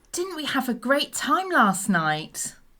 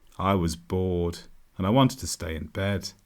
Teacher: she went up and down and went up and down again many times with her tone when you do this it shows enthusiasm for what you're saying